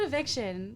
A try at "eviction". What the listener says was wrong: You said eviction. There was clearly an N there.